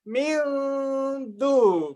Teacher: Makanya nunnya menjadi hampir menjadi dal, tapi dia nggak mau. Karena dia punya khoisum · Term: idgham nakis